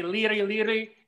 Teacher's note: there's a flipping of an L and an R sound